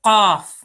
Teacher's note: It's a thick qaf. Yeah, from the throat.